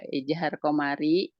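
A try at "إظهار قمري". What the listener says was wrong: Jangan bilang ijhar. Ilhar. Iya, jangan. Nanti muridnya 100 orang itu bilang ijahar, ijahar.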